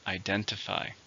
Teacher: How many syllables are in identify? 4, stress in the second.